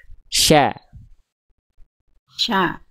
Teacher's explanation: makhrajnya dari tengah lidah yang kita Arahkan ke langit-langit dia punya sifat tafasyi menyebar udara